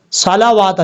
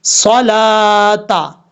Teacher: सिर्फ लाम पढ़ा जाएगा, और लाम के ऊपर जो खड़ा दबर है एक अलिफ की मिकदार खड़ा दबर की वजह से लंबा करके पढ़ा जाएगा।